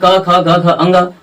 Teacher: इन सभी वर्णों का उच्चारण कहां से होता है, तो कंठ से होता है